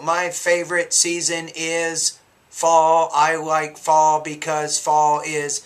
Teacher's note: your tone is almost like a half pitch rise after every idea